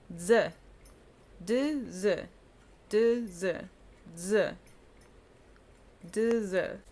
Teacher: You're taking the D sound and you're taking the Z sound and you're combining them.